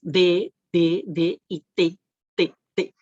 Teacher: Sentimos como nuestra punta de la lengua, ¿cierto? Hace un contacto con los incisivos superiores. D, T, ¿cierto? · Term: linguodental